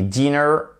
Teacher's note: vous avez l'accentuation sur la première syllabe